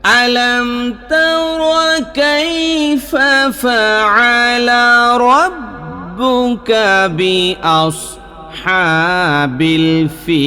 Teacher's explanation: আমি একেবারে শেষ দিকে আইসা ফিল লম্বা একটা টান দিছি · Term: মধ্যে আরজি